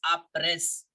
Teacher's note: the S I am not pronouncing it as a press no no sound of s it will remain silent